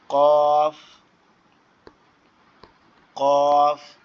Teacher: আর জিহ্বার গোড়া থেকে হবে হচ্ছে কফ, জিহ্বার গোড়া থেকে মোটা আওয়াজে হবে কফ